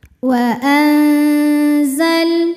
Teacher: Karena nun sukun menghadapi huruf zai, maka bunyi nun sukun disamarkan, siap-siap menuju zai disertai dengungan. Samar dan dengungannya sama karena zai makhrajnya tidak terlalu dekat dan tidak terlalu jauh dari nun. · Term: ikhfa